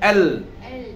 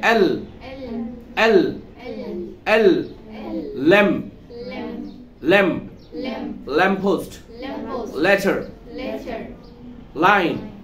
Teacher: এল উচ্চারণ করার সময় জিহ্বাটা চ্যাপ্টা হয়ে উপর দিকে উঠে যাবে, এল। একটু বের হবে, এল।